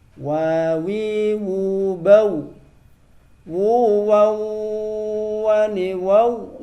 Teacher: Wawu itu tidak usah ditempelkan, hanya dimonyongkan saja. Wa. Jadi cukup dimonyongkan saja. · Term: huruf wawu